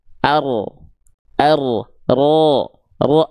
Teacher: Dia punya sifat penyimpangan makhraj. Jadi, huruf ro itu asalnya ujung lidahnya nempel ke langit-langit bagian depan. Nah, ketika dilafalkan dia agak diseret ke dalam. Ar ar ro agak diseret disimpangkan makhrajnya ke arah dalam.